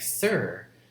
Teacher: it's only consists of 2 consonants, s and r, and the second consonant r is acting like a vowel. So the correct transcription of the word is this 2 letter with 1 diacritic, and this diacritic, a small vertical line at the bottom, right below the consonant alphabet, is meaning that it's syllabic consonants. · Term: syllabic R's